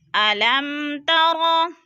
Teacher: ادھر اظہار شفوی ہے، یعنی غنہ نہیں کریں گے، لفظ کو ظاہر کر کے پڑھیں گے